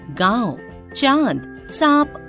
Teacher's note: जिस वर्ण के उच्चारण में हवा मुंह और नाक दोनों से बाहर निकलती है वह ध्वनि अनुनासिक होती है